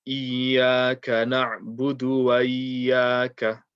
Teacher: they kind of join the waw and the alif together and they kind of say wa iyaka